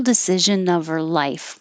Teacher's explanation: i got rid of the h in her and this is of o f but it really sounds like u v